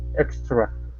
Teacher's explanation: Now with the TR, you want to pronounce that like a CH.